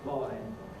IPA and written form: mɑɪn (mine)